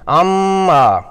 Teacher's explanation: عما میں میم مشدد ہے جو کہ غنہ کا باعث ہے۔ میم کی آواز کو 2 حرکات کی مقدار میں ناک کے بانس سے یعنی خیشوم سے ادا کرنا ہے، زبان ساکت اور ہونٹ بند ہوں گے